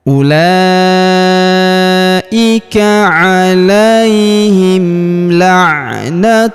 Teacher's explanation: Alaihim la'natullahi, huruf tu langsung sambung lompat ke huruf lam pada lafaz Allah atau lafzul jalalah. Di sini kita tahan dan tekan pada huruf lamnya karena terdapat tanda tasydid di atasnya, dan kita panjangkan 2 harokat karena alif kecil di atasnya ya.